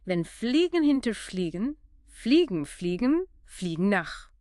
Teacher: That's coordinating the F teeth on lip with the L sound tongue tip behind teeth, air around the sides. A lateral approximant.